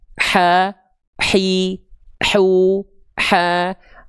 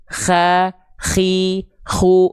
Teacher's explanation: pastikan dia dilafalkan tepat dari bagian tengah tenggorokan kita